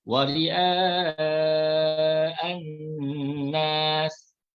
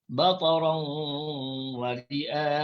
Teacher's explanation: Panjangnya kena baca 4 harakat. Namanya ialah mat wajib muttasil.